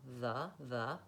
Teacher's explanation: Make sure that you can establish that sound by itself, that you can say th accurately, and then begin to build it into the two sounds, th and vowel schwa